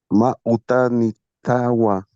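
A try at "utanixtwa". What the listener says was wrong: Utanitua. Porque si me pones Utanitawa, me estás diciendo, tienes una casa, me estás diciendo. Importante la elección vocálica aquí, ¿ya?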